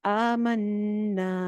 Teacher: جائے گی، دو الف۔ قالوا آمنا، آمنا، امنا نہیں کہنا، آمنا، آ اور نا ایک جیسے ہوں گے، نون شد پہ غنہ بھی کریں گے